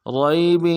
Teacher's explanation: فی ریب، را کو یا کے ساتھ ملانا ہے، یا لین ہے بغیر کھینچے پڑیں گے